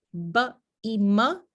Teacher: ba y ma tienen un punto de articulación vila vial porque los dos labios se tocan el labio inferior sube para tocar al labio superior